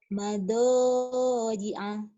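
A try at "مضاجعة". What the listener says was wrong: Mada. Tuh ya yang jadi enak tuh itu tuh. Penekanan yang pas. Kalau kamu kan mado, mado, yang denger juga orang kurang yakin ya.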